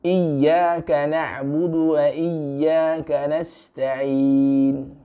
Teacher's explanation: Ketika menghentak sedikit huruf iya, huruf ya yang distasydid itu tidak lain dan tidak bukan untuk menghindari supaya tidak dibaca sama seperti mad. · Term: nabr